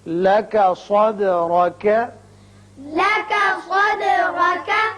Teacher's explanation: دال جب ساکن آ جائے تو اس کی صفت قلقلہ ادا کی جاتی ہے۔